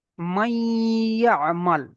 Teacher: দেখেন নুন সাকিন, এখানে নুন সাকিন, নুন সাকিনের পরে দেখেন ইয়া এসছে, তাহলে এটাকে আমরা ধরে নেবো ঈদগামে নাকিস, একে একালিফ পরিমাণ গুণনা করে পড়তে হবে।